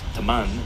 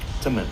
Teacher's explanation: the word for friend, teman, is pronounced more like temen